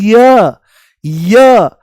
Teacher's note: य बोलते ही इ की ध्वनि आती है। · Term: अर्ध स्वर